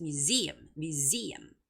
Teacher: the word museum has the second syllable stress, so it's museum.